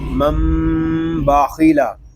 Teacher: با زبر با، منبا، خا زیر خی، منباخی، لام زبر لا، منباخیلا، خا یہ حروف مستعلیہ میں سے ہے، اس کو پر پڑھیں گے